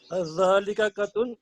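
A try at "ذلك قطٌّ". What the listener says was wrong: हाँ, यहाँ आपने पढ़ा कत्तुन। कत्तुन जो है, कत्तुन असल में कहते हैं कभी भी नहीं, नेवर। कॉफ के नीचे जेर है तो आप पढ़ेंगे कित्तुन, कित्तुन।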